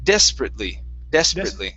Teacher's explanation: so our stress is at the very beginning the ate we're going to pronounce that like an i t